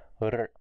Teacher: Automatically the tongue can curl backward if you just train it to make it more like a strong retroflex ṛ sound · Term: strong retroflex R sound